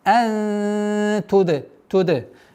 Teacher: Удержание назализации, ихфа, сокрытие в размере 2 огласовок, мягкое произношение.